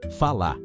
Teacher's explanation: o r que quase some em palavras como falar vira quase falá